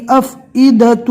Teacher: یہاں پر واو کی شکل میں حمزہ آ گیا اور اس کے اوپر جزم ہے، اور ہم آپ کو پہلے بھی بتا چکے ہیں کہ جزم والے حمزہ کو پہلے والے حرف سے ملا کر جھٹکا دے کر پڑھیں گے